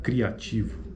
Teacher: Mas a acentuação, a proeminência acentual ocorre na vogal A, né? Então, logo ela é crescente. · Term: ditongo crescente